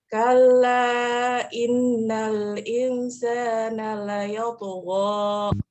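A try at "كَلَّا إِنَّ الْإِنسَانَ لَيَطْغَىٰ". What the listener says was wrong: Mumtaz.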